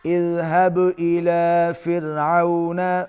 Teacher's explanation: با پر قلقلہ ہوگا اور را باریک ہوگا چونکہ را سے پہلے زیر ہے